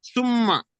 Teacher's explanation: নুনের ওপর তাসদিদ আসলে আর মিমের ওপর তাসদিদ আসলে এই দুটি গুণনা হবে। এখানে এটা এক পরিমাণ গুণনা করে পড়তে হবে।